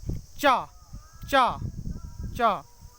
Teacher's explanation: जो जीभ है वो तालु पर जाकर जुड़ जाती है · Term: चा वर्ग